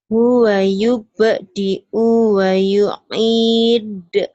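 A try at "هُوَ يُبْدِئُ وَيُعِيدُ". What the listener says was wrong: Pendek. Huwa yubdi'u wa yu'id. Wa yu'id. Jadi panjang pada disukun.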